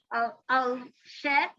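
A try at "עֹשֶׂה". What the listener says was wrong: Se. No, there's nothing at the end. The hay is silent.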